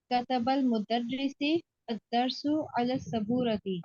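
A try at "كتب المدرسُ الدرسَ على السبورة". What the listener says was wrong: अच्छा एक मिनट, देखिए गलत हो रहा है, पता है गलत हो रहा है, गौर से पढ़िए, एहराब गलत हो रहे हैं, दोबारा पढ़े। नहीं ना, कतबल मुदर्रिसी कैसे होगा? जी, टीचर ने लिखा है ना, तो टीचर फाइल है।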